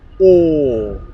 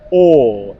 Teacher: My lips are rounded, or. They're not unrounded, The sound comes from the back of my mouth, or. And my mouth is half open, or. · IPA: /ɔː/